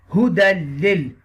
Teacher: da sound will connect with the lam mushadda with the extra stress. This lam zeli will connect with the lam sakina, because first lam has the tashdid sign, the second lam has the jazm sign.